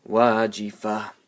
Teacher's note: ta marbuta will change into a small ha, and will get a sukun.